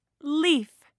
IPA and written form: liːf (leaf)